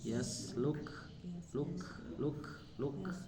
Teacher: Kemudian di yaslukhu itu kan ada kaf sukun Bu ya, maka itu sifatnya hamas